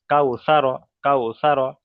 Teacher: তাহলে কাউ বলে এখানে টান হবে না, তার কারণ এখানে ওয়াউলিনকে সর্বদা এই ওয়াউলিনকে নরম আওয়াজে তাড়াতাড়ি পড়তে হয়, সেই জন্য এখানে টান হবে না